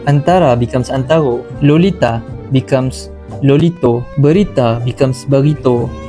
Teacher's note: A at the end of the word will become O.